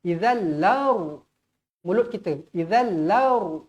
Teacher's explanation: Huruf ra perlu dibaca tebal kerana sebelumnya adalah huruf baris atas. Izallaru. Mulut kita izallaru, jangan baca izallar, salah.